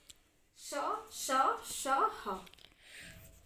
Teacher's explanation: तो ये गर्म हवा निकलती है जिसको हम बोलते हैं उष्म, उष्म वायु। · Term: उष्म व्यंजन